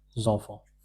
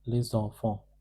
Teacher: Les enfants means children. So when we link S with this en, the sound produced is zon. Zonfant. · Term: liaison